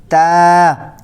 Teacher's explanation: یہ باریک نرم آواز کے ساتھ، سیٹی نہیں ہونی چاہیے اس میں سین کی طرح